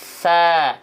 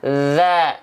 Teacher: Kalau sa kayak huruf zal tapi bocorin nafas.